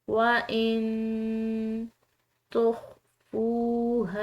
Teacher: وَإِن تُخْفُوهَا، یہاں پر نون ساکن ہے، اس کے بعد تا ہے حروف اخفا میں سے، تو اس نون ساکن کو ہم نے مخفی ادا کرنا ہے